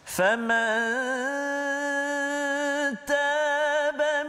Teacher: nun mati bertemu dengan ta, dengung dua harakat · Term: ikhfa hakiki